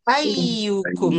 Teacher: Kena tarik sikit ayyukum sebab ada sabdu. Ada dua ya.